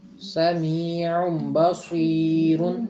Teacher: تو تنوین وہی آپ نے فارمولا جہاں نون آئے گا وہاں آپ نے اس کے اوپر اس کے فوراً بعد اگر بے آ رہا ہو تو آپ نے اس کو نون کی آواز کو ختم کر کے تو آگے بے کے ساتھ مل جانا ہے